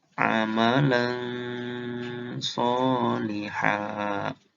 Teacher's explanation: kalau huruf so sama, nun matinya dijadiin ong dan ditahan